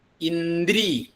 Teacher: അത് മൃദുവായിട്ടുള്ള ദകാരാണ്. ന എന്നുള്ളതിൻ്റെ കൂടെ കൂടുന്നത് മൃദുവായിട്ടുള്ള ദകാരമാണ്. അതിൻ്റെ കൂടെ ര എന്നും കൂടി വരുന്നു.